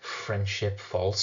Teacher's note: You've got the fricative alliteration of friendship false